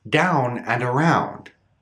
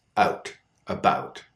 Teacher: with a voiceless consonant after it's much smaller the sound is raised